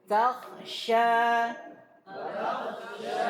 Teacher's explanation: Hendaknya seorang pembaca untuk menyempurnakan haknya huruf K mak dan sifat sifatnya. Maka dia sempurnakan sifatnya terlebih lagi sifat hamsnya. Jangan sampai huruf k ini menjadi huruf gain.